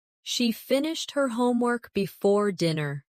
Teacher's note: Which words are stressed? Yes. Finished homework and dinner. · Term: sentence stress